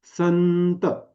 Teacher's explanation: आता जीभ कुठे टेकली दाताजवळ टेकली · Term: न वर्गीय अनुना अनुनासिक